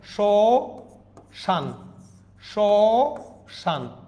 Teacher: শ্মশান, মফলাটা শুরুতে আছে, উচ্চারণ হচ্ছে না